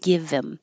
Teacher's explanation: So this is called H-deletion. You're getting rid of the H in pronouns that begin with H.